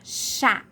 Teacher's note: é um chá né e é bem aberto ó chá então acento agudo o agudo porque é bem aberto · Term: som aberto